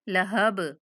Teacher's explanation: अगर हम लहब पे वक़फ़ करते हैं तो बा पे कलकला करेंगे